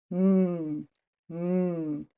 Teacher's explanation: I felt my nose buzzing